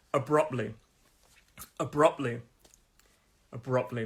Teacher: three-syllable word abruptly stress is on the second syllable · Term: 2nd syllable